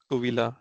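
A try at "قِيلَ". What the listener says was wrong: उवीला, ये जो ऊ ई साउंड है ना, ये अरबिक में एग्जिस्ट नहीं करती।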